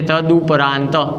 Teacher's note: અઘોષ વર્ણ તરીકે આવતો ત અને ત્યારબાદ આવતો સ્વર ઉ છે, માટે તનો દ થશે અને એ દમાં ઉ વર્ણ ભળી જશે એટલે શબ્દની સંધિ થશે તદુપરાંત.